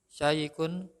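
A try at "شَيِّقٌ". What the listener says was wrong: Tasdid ya, syayikun.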